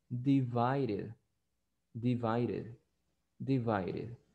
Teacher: También la letra D, cuando está en medio de vocales, se pronuncia como una R.